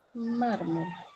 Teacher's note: Se tildan las palabras graves, voy a tildar, siempre y cuando éstas terminen en cualquier consonante distinta o diferente a NS o vocal. Entonces, mármol tiene la mayor fuerza de voz en la penúltima sílaba